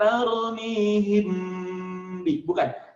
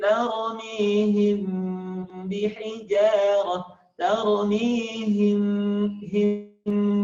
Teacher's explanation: jadi bibirnya nggak rapat penuh him bi, tapi him agak renggang sedikit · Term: Mimnya samar